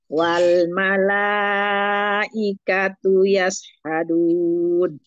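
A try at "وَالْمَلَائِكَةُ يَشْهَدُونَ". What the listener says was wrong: Oh, tapi syinnya jangan lari. Yash. Yasha.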